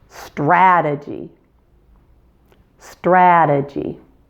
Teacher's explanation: There's a D first and then a J sound in strategy.